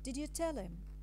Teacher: the tone goes from a mid to a very low level and this is called a low for tone and this statement